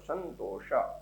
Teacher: અનુસ્વાર પછી ત વર્ગનો વર્ણ હોવાના કારણે ત થ દ ધ ન એનો અનુનાસિક વર્ણ ન થાય છે